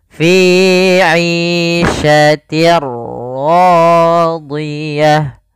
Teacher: ada tanwin bertemu dengan huruf ra, kita hukumi dengan bacaan idgham bila gunnah · Apa yang dimasukkan adalah suara tanwin. Awalnya fi 'ishatin ketemu ra, maka langsung masuk di ra-nya. Bunyinya langsung ke huruf ra.